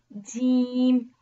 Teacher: Jim originate when the tongue center region touching the hard palate